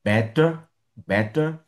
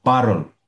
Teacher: un mot qui a T entre les voyelles, le T se transforme en R